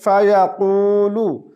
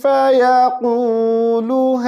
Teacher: قاف کو موٹی آواز کے ساتھ پڑھیں گے